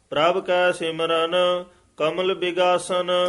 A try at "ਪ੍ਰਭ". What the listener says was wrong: ਧਿਆਨ ਨਾਲ ਜਿੰਨੇ ਵੀ ਪ੍ਰਭ ਪਦ ਆ ਰਹੇ ਹਨ ਇਹਨਾਂ ਨੂੰ ਪ੍ਰਭ ਨਹੀਂ ਕਹਿਣਾ, ਬੱਬੇ ਨਾਲ ਭੱਬੇ ਨਾਲ ਉਚਾਰਨ ਕਰਨਾ ਹੈ, ਪ੍ਰਭ।